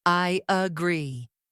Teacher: Instead of I, pause, agree. Americans connect them with a Y sound. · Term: linking vowels to vowels